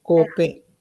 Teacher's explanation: Invece cope è acuto, quindi la O è stretta.